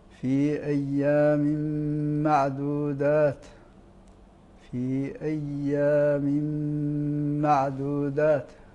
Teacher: التنوين وقع بعده حرف من حروف الادغام وهو الميم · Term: الادغام بغنه